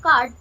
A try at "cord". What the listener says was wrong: কর্ড, এই হচ্ছে সমস্যা। বলে দিলাম যে ও উচ্চারণ হলেই আকার, সবসময় হয় না, সবসময় হয় না, মাঝে মাঝে হয়, মাঝে মাঝে হয় না। ইংরেজি ভাষা হচ্ছে এটাই হচ্ছে সমস্যা, যা লেখা থাকে তা উচ্চারণ হয় না। কর্ড।